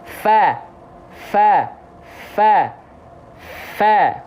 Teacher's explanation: huruf fa punya sifat mengalir nafas juga, aliran nafas keluar. Jadi bukan desis, tapi mengalir nafas.